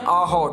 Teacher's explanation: अ और हकार को कंठ्य कहते हैं। कंठ इनकी संज्ञा है। कंठ से ये उत्पन्न होते हैं।